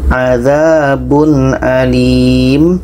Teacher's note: Tanwin bertemu a, tidak dengung.